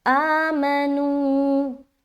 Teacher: तो यहाँ पर अलिफ, यहाँ पर जो हमजा है उसको एक अलिफ खींच रहा, मीम को जल्द अदा किया, नू में फिर एक अलिफ खींचा